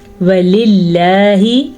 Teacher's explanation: لفظ اللہ کو ہم باریک پڑھیں گے کیونکہ لفظ اللہ سے پہلے زیر ہے۔ یاد رکھیں لفظ اللہ سے پہلے اگر زبر آ جائے یا پیش آ جائے تو لفظ اللہ پر پڑھا جاتا ہے، اور اگر لفظ اللہ سے پہلے زیر آ جائے تو لفظ اللہ کو باریک پڑھا جاتا ہے۔